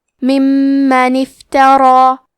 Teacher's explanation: کلمت افترا میں حرف را کی حرکت ہے زبر تو ہمیں حرف را کو موٹی آواز میں پڑھنا ہے کیونکہ اس کے بعد کھڑا زبر ہے تو یہاں مد الف ہے.